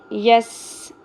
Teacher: سین سیٹی کی آواز کلیئر ہونی چاہیے